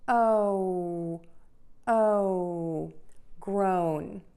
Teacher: we are going to say o with an oval open mouth shape we're just going to get your tongue low in your mouth and then you're going to pucker we're just going to help your tongue move up into the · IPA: /groʊn/